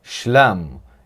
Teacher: Em aramaico, eles preservaram o som de sh, mas perderam a vogal A breve, mas sim preservaram a vogal A longa.